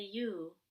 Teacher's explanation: when it's more formal or when we're speaking more slowly, we might actually say you with the rounded lips. But even if we do say you, it's still going to be quick and with less energy.